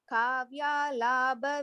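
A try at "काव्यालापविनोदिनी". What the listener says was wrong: Good, ma, it is kavya lapa. It is not labha. Lapa.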